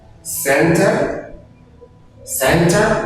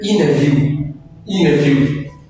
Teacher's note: si le T vient après N, donc le T ne se prononce pas.